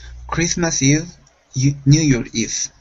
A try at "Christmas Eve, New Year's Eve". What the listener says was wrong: Okay, give me a good V sound. Instead of Eve, it's a V.